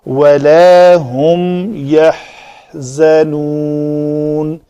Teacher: یہ جو ہا ہے اس کے لیے منہ زیادہ کھولا جاتا ہے، سانس کے ساتھ ساتھ آواز بھی تھوڑی سی نکالی جاتی ہے تو یہ اس کا مخرج مکمل ہو جاتا ہے۔